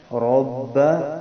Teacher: را کو پر پڑھنا ہے، زبر ہے